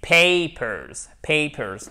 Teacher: Non seulement vous avez l'accent tonique ici, mais le A, en fait, c'est une diphtongue. C'est comme le A de oseille, papers. Il ne faut vraiment pas hésiter à le prononcer de cette façon un peu fort.